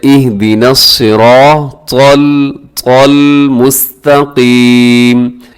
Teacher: اہدنا الصراط، را موٹا پڑھا جائے گا، اور آگے جو مشکل ہے وہ ہے تو. تو کو موٹا کیجیے گا، تو باریک نہیں ہے، ہمیشہ موٹا پڑھا جاتا ہے